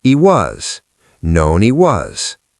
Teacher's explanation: Drop the H in he.